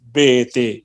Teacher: مثلا جیسے وہ ابھی کہا تھا بی تی سی, یہ آواز نہ ہو, پوری طرح نہ یا بنے, بلکہ آدھی یا اور آدھا الف